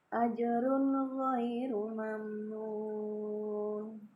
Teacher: mim sukun bertemu dengan huruf nun juga itu idhar ya, idhar syafawi, maka harus dibaca jelas tanpa dengung.